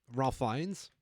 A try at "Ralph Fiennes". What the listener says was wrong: Rafe, I think, is how it's pronounced. yeah, Wikipedia has it's Rafe, which is weird because it's spelled Ralph.